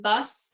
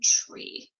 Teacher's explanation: the final consonant of the word is deleted off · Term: final consonant deletion